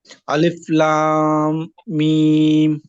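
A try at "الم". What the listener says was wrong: লাম, মিমের মধ্যে কি আছে? একটা গুণা আছে, লাম মিম। আচ্ছা, আরেকটু লম্বা হবে, লম্বার পরিমাণটা একটু কম হয়ে শোনা যায়।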